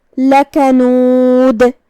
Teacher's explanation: آخری میں ہم دال پہ روکیں گے تو دال پہ جزم سے روکیں گے، تو جو کہ دال ساکن حروف القلقلہ میں سے ہے تو ہم دال کو ہلاتے ہوئے یہ کلمہ کو ادا کریں گے · با پہ تشدید ہے، 2 حرف کے برابر با کو پڑھنا ہے